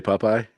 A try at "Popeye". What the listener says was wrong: You overpronounced it the second time. Popeye the first time.